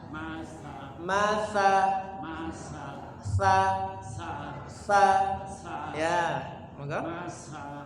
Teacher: lidahnya jangan ditempelkan di atas kalau kita tempelkan dia berubah jadi huruf Sya